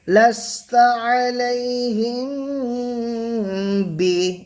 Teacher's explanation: মিম সাকিনের পরে যদি বা আসে তাহলে মিমকে গুন্না সহ পড়তে হবে, একে ইখফায়ে শাফাবি বলা হয়, ঠিক আছে।